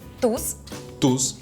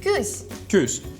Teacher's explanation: В слове «туз» твердый звук «у», а в слове «кюсь» мягкий «ю».